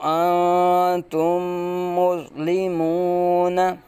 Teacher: میم ساکن کے بعد اگر دوسری میم آ جائے تو یہاں ادغام شفوی کا قاعدہ ہوگا، یعنی میم ساکن کو میم مشدد میں ملا کے ہم پڑھیں گے